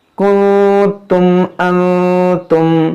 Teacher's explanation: یہاں دیکھیں نون ساکن کے بعد تا, یہاں پر اخفا کریں گے